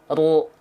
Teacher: Karena ro bukan di ujung lidah makhrajnya, tapi di punggung lidah. Ru. Ujung lidahnya nggak nempel.